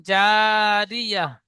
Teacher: আয়াতের শেষে গোল তা এসেছে, এটি হা সাকিন করে পড়বো।